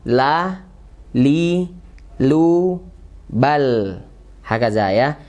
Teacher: sampai ke ujungnya menempel ke gusi atas Ya sifatnya tipis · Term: lam